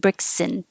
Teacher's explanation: When it's combined, you don't have to say a perfect and. You can drop the D and then the A drops and then just have the letter N, but you have to have some vowel between the S and the N.